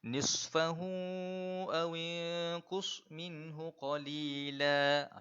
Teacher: kalau kita nak sebut huruf sad ini, kita kena seolah-olahnya macam bersiul sedikit. Semakin tajam siulan kita itu, semakin tepat huruf kita dengan semakin tepat bacaan kita pada huruf sad tersebut.